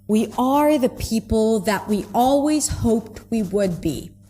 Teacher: Even on the function words, we are the people that we always hoped we would be. There is weight on every single word here. So there are less reductions because every word is important. And it also helps me as a listener understand that oh there is an important part here.